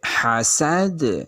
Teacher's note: تو اب یہاں پہ قلقلہ کیجئے. حاسد، دال کی آواز آ رہی ہے لوٹ کے